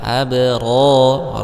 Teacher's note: Kemudian ada alif lam bertemu dengan huruf hamzah maka di sini hukumnya alif lam qamariyah. Abra, nah di sini ada huruf basukun ya, maka dimunculkanlah sifatnya yaitu qalqalah. Abra, ra mad tabi'i karena ada alif sebelumnya fathah.